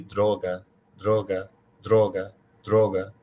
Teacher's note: you almost have to roll the sound traill the sound as opposed to saying this word like you would in English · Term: roll the r